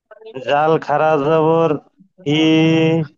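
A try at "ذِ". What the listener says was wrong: না না, জাল খাড়া জবর নয়, ওটা জের আছে।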